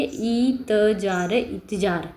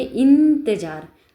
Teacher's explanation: न का उच्चारण हो रहा है अनुस्वार में आधा न